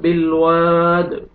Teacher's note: दाल जब स्टॉप करेंगे तो साकिन हो जाएगा और कलकला डबल साउंड आएगा।